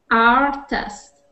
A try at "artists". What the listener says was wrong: Artists. And when you see that with the S at the end, make sure you pronounce that S. So artists.